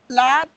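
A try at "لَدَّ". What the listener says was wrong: Ladda, not lat. Because of shadda, this ta sakin is omitted.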